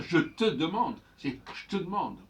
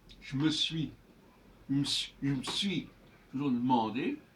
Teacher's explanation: il est tout à fait normal de ne pas prononcer le E après le J ou après le T ou après le M